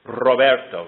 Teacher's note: There is a little bit of air that vibrates with the tongue. · The consonant R is usually trilled. It's a trill sound that is made with one's tongue pressed against the ridge of the sort of upper soft palate and the teeth.